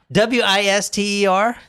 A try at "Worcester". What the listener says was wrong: No, not with an I. Worcester.